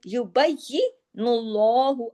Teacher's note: کذالک یبین اللہ، یبین اللہ، اللہ کے نام سے پہلے چونکہ زبر یا پیش آ جائے، دونوں میں سے کوئی بھی ایک آ جائے تو اللہ کے نام میں لام ہیوی ہو جاتا ہے، لام جلالہ ہو جاتا ہے